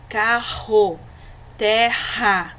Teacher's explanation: nós vamos sentir o r tremendo a garganta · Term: r forte